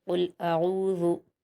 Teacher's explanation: कुल, हमज़ा पर हरकत है जल्द पढ़ेंगे, आइन पर वाव मद्दा है, दो हरकत खींच कर पढ़ेंगे। आऊ, ज़ाल पर हरकत है जल्द पढ़ेंगे और ज़ाल को नरमी से पढ़ते हैं।